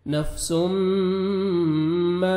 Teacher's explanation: آپ نے یہاں پہ ادغام کرنا ہے غنہ کے ساتھ, نوز میں ساؤنڈ لے کے جائیں گے. نفسم ما, الف مدہ, 1 سیکنڈ میم کو کھینچنا ہے, قاف کو موٹا کر کے پڑھیں گے.